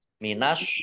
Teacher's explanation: tak marbut karena wakf dibaca H sukun